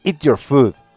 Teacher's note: con un tono más alto y fuerte la frase se transforma en una orden contundente